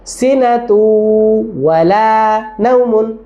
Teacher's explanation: ঠোঁটটা গোল করে রাখলাম, কারণ ওয়ার উচ্চারণ তো ঠোঁট গোল হবেই।